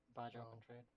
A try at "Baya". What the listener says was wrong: It's not Baja, it's Baya.